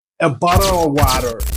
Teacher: ce T qui devient un D souvent à l'oral en anglais ce th qui est transformé en D est ce qu'on appelle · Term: flap T